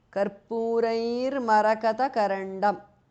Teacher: the visarga changes to repha or r